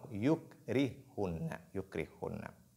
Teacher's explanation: Yukrihunna, il y a ha et ha. La première porte sukun. Elle est donc assimilée.